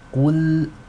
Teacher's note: Qaf is heavy, lam is light.